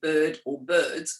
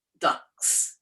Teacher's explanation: the letter s is going to represent the sound z which is its voiced sound